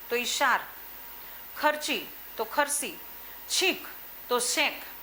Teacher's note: ચ અને છ નો અનુક્રમે સ અને શમાં રૂપાંતર કરે છે